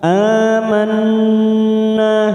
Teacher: huruf nun yang bertasdid namanya gunah musaddadah kita Tan tiga ketuk